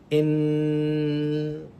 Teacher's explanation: In the n sound, the air coming from your lungs does not have a place to escape from but your nose.